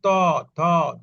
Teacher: এগুলা বলতে গেলে দাতটা লাগে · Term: দন্ত ধ্বনি